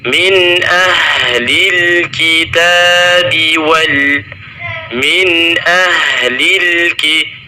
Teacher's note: nun sukun ketemu dengan hamzah, maka terdapat bacaan izhar halqi, yaitu kita membacanya dengan jelas